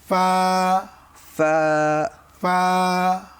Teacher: ফা হরফটি উচ্চারিত হবে উপরের দাঁতের আগা, নিচের ঠোঁটের পেট